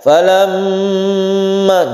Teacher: mim yang bertasydid itu adalah gunnah, kita panjangkan. Falamma, jadi ketika falam lam itu kita tahan membacanya. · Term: gunnah musyaddada